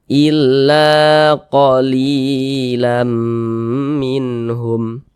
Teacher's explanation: Ini huruf alif, sebelumnya ada huruf lam memiliki tanda baca fathah dia, maka huruf lam ini dibaca panjang. Mad tabi'i panjangnya 2 harokat.